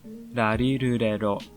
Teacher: The Japanese R sound is the same as the Spanish R sound, the single R, R, not the double R, the R. Your tongue flips downwards and backwards, behind the upper teeth.